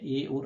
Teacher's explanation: यानी ए और ऐ किससे बोले जाते हैं, कंठ तालु यानी कंठ और तालु दोनों से बोले जाते हैं